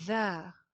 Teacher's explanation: ذال کے اندر سیٹی کی آواز نہیں آئے گی